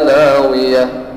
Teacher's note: dia tidak dibaca lagiyata tetapi lagiyah ya, walaupun dia baris atas.